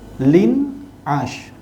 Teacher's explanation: sebab tu dia nama izhar halq cara baca dia Lin as tanpa dengung menyatakan bunyi tanwin kemudian sebut huruf yang seterusnya